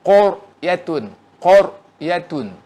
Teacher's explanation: Itu ra itu ditafkhimkan kerana dia mati sebelum dia huruf berbaris fathah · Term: ra tebal